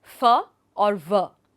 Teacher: जब निचले होंठ और दांतों को आर्टिकुलेटर के रूप में उपयोग करके ध्वनियों को व्यक्त किया जाता है, तो उन्हें लेबियोडेंटल यानी दंतोष्ठीय ध्वनियां कहा जाता है